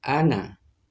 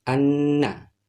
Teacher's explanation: Artinya tasdid mendobelkan huruf yang tertimpa tasdid seperti nun di sini. Pada semulanya ana, maka kalau bertasdid dibaca anna, seraya didengungkan 2 harkat atau 3